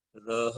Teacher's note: रह का उच्चारण करते समय हमें रा को केवल टच करना है और हा को लंबा करना है। रह, ये 4 सेकंड का।